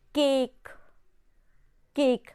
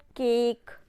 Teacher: आपका जो टंग है टच कर रहा है आपको पैलेट से